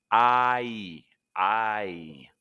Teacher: With the I sound, you want to start with a wide mouth for ah, and glide into an E.